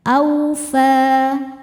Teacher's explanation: Karena ada huruf fa dengan harakat fathah panjang. Cara bacanya panjang dua harakat saja. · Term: mad thobi'i muqaddar